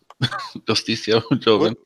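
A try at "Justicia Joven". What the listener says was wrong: It's Hoven, fool. H. J sounds like H.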